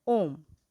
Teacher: प्लुत स्वर हम उन्हें कहते हैं जिन्हें बोलते समय ह्रस्व स्वर से 3 गुना समय लगता है।